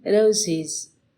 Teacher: the plural s is realized as z in boys, as s in caps, and as is in roses